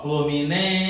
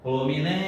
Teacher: Olha a sílaba que se estendeu. Foi o NEM. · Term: sílaba tônica